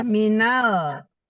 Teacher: Di ujung lidah ketemu langit-langit bagian depan. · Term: Lam sukun